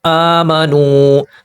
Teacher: واو ساکن سے پہلے پیش ہے، واو مدہ ہے، پیش کو 2 حرکات کے برابر کھینچیں گے۔